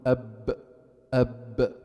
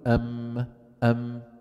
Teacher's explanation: الشفتين عنا ثلاث حروف يخرج منها الباء والميم كيف باطباق الشفتين باطباق الشفتين على بعضهما ويكون في الباء اقوى من الميم · كلاهما يخرجان بانطباق الشفتين على بعضهما البعض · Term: ما بين الشفتين